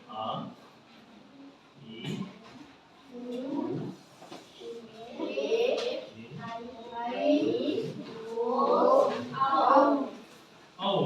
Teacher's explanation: ಸ್ವರಗಳು ಅಂದ್ರೆ ಅ ಈ ಉ ಎ ಐ ಓ ಔ ಔ ಅಂತ ಈ ಏಳು ಅಕ್ಷರಗಳನ್ನ ಎರಡು ಮಾತ್ರಾ ಕಾಲದಲ್ಲಿ ಉಚ್ಚರಿಸುತ್ತೇವೆ ನಾವು ಎರಡು ಮಾತ್ರಾ ಕಾಲದಲ್ಲಿ ಉಚ್ಚರಿಸಲ್ಪಡುವಂತಹ ಅಕ್ಷರ ಆಗಿರೋದ್ರಿಂದ ದೀರ್ಘ ಸ್ವರ ಅಂತ ಕರೀತೀವಿ ಹೌದಾ